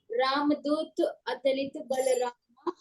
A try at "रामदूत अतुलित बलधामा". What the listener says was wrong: बलधामा, बलरामा नहीं धामा। फिर से बोलेंगे ।